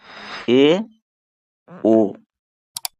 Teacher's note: मुख आधा बंद होता है। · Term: अर्ध संवृत स्वर